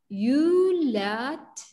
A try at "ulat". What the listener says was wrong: Not you. How, what is sound of you? What sound of you? Ooh. Ulat.